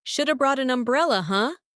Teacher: In real speech, should have becomes shoulda.